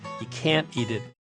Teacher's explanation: If the next words starts with a vowel, sometimes we'll hear a glottal stop, a kind of catch in the throat, instead of that last 't'